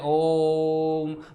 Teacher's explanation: ऐसे स्वर जिनके उच्चारण में लगभग 3 गुना समय लगता है तो उन्हें आप क्या कहते हैं? उन्हें आप प्लुत स्वर कहते हैं।